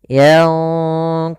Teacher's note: nunnya disamarkan kepada huruf qaf dan qaf termasuk huruf yang tebal maka ikhfanya juga ikhfa yang kita tebalkan